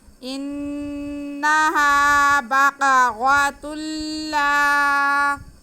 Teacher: تنوین کو ہم لام میں ملا کر پڑھیں گے اور لام کے ساتھ الف ہے تو یہ الف مدہ بھی ہے, تھوڑا کھینچیں گے بھی. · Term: ادغام